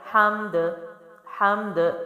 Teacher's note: اب یہاں پیچھے تو آلریڈی میم ساکن ہی ہے لیکن اب ہم ہا کی زبر کے ساتھ میم بھی پڑھیں گے اور دال بھی پڑھیں گے، اور دال حروف قلقلہ ہے تو دال کو ہم نے کیا کرنا ہے؟ ہلانا بھی ہے، اس میں جنبش پیدا کرنی ہے